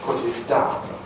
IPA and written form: pʊt ɪt daʊn (put it down)